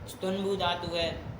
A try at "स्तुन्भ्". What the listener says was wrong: हाँ चलो, स्तुनभू धातु है, स्तुनभू मत कहो, उकर चला गया ना, उकर संख्या लोप कर, स्तुनभ स्तुनभ धातु। हाँ चलो, तो स्तुनभू का सुनो, स्तुनभू में उकर चला गया, स्तुनभ